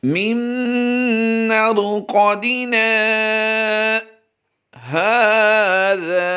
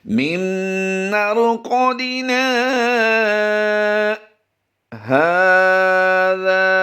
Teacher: ہا کھڑی زبر ہا کو بھی ہم نے لمبا کرنا ہے، زال الف زبر زا کو بھی ہم نے لمبا کرنا ہے۔